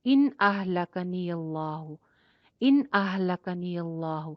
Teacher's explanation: ان اہلکنی، ان ہو رہا ہے، یعنی کہ نون کو آپ شو کر کے پڑھ رہے ہیں، یہاں پہ ان نہیں کریں گے، غنہ نہیں کریں گے، اس کو لمبا نہیں کھینچیں گے، یہاں پہ سٹے نہیں لیں گے، نون کو ظاہر کر کے پڑھ دیں گے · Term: اظہار